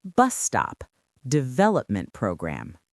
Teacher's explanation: The main stress falls on the first word.